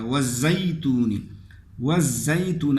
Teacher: اب یا لین میں مد نہیں ہوتا بلکہ اس کو نرمی سے پڑھا جائے گا